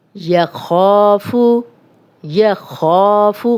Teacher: خا الف مدہ 2 حرکات لمبا کریں گے، خا موٹا بھی ہے اور زبر اور پیش کو لمبا ہونے سے بچائیں گے، یخافو۔